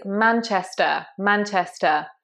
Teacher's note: you want to make sure you get the stress right here. It's on the man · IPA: /ˈmænʧɪstə/